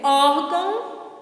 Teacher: o O é o mais forte, então não é o gão. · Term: átona